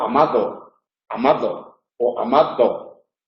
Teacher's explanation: También se puede pronunciar una D tensa